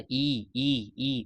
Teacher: जबकि ई बोलने पे ई बोलने पे जीवा जो जीवा जो होता है मुख जितना संभव हो सकता है उतना ही ऊंचा ई ई ई ऊपर की तरफ जा रहा है और तालु तालु जो है वो उतना ही रहता है। मुंह पूरा खुलता नहीं है। इस वजह से यह संवृत स्वर कहलाता है